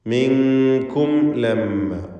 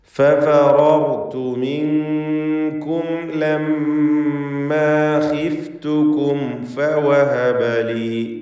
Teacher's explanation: ഇവിടെയൊക്കെയുള്ള സാക്കിനത്തെ മീമിനെ ഇൽഹാർ ഷഫവി നൽകി മണിക്കാതെ വെളിവാക്കണം